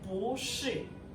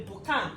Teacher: We know this is original tone of bo, right? But because it's followed by a word that also have last tone, which is falling, so this original tone of bo now changed to second tone